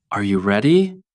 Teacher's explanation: For example, when you say, "Are you ready?" Your voice goes up at the end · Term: intonation